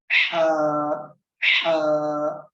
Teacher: Ha is a letter which is coming from middle of your throat, and there is a stress in this letter. Ha, ha. Sound should be very clear.